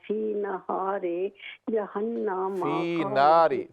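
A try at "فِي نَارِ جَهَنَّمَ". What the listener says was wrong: فی نار نہاری نہیں ہے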